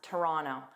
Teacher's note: I drop that middle T and just pronounce it as Rono.